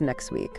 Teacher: sometimes sounds even disappear completely, like the T in next week, which becomes next week.